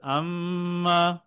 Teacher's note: মিম সাকিনের পরে ইদগামের হরফ মিম আসলে প্রথম মিমটিকে দ্বিতীয় মিমটির সঙ্গে সংযুক্ত করে ঈদগাম মানেই সংযুক্ত করা একটার সাথে একটা লাগিয়ে দেওয়া সংযুক্ত করে